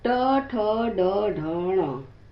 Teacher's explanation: इसमें जीभ को मोड़कर मुंह की छत की सबसे ऊपरी हिस्से को छूना पड़ता है। वो पीछे की तरफ मुड़ती है। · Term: ट वर्ग